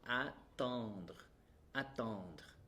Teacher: Remember, it starts with A, open mouth A with a nasal sound.